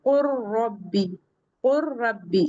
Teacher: इस लाम का र में इदगाम हो जाएगा। ये इसमें मुदम हो जाएगी। तो हम कुल नहीं पढ़ेंगे। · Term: इदगाम मुतकारबैन